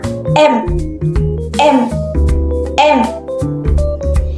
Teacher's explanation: Yang kedua yaitu bunyi nasal yang dihasilkan dengan menutup saluran suara pada rongga mulut sehingga udara keluar melalui rongga hidung